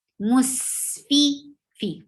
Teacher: For kasra, give E sound, and it is short